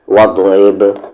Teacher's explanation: ری کو با میں رب، با پر یہاں پر قلقلہ کریں گے، قلقلہ یعنی کہ آواز کو ہم باؤنس کریں گے، رب نہ کہ رب، اس طریقے سے نہیں، رب، وض رب۔ را یہاں پر لائٹ پڑھا جائے گا یعنی کہ پتلی آواز سے پڑھیں گے کیونکہ اس کی آواز نیچے ہے، وضرب۔